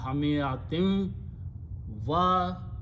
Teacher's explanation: hamiyatin should be pronounced with the nun gunna